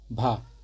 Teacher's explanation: तो भा जो है ये हम लोग का स्पर्श है, घोष है, महाप्राण है, ओष्ठ ध्वनि है, ठीक है। भा जो है स्पर्श, घोष, महाप्राण और ओष्ठ व्यंजन है।